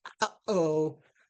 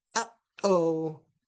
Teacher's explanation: in English, we have a glottal stop like occurs in the sequence uh-oh